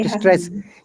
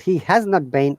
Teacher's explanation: You have to stress on the not.